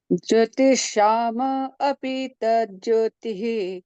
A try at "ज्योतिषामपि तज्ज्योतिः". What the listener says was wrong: Break मत करिएगा। ज्योतिषामपि, आप ब्रेक कर रही हैं, इसको ब्रेक मत करिए, फिर से।